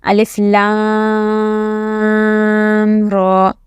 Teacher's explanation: As you can see, there is no mud over the ra. So you do not have to drag the ra, okay? You will drag only the lam. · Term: drag the la